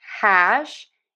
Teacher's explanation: for hash wide open a and then end with that shh. We do have a very quiet h on there. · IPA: /hæʃ/